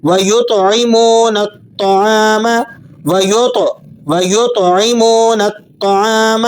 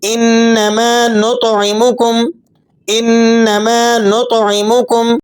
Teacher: تو کو آپ نے موٹا کر کے اور ہلا کے پڑھنا ہوتا ہے